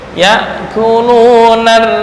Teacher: ro bertasydid kemudian berharakat kasrah. Nah, ini entar cara membacanya adalah dengan tarkik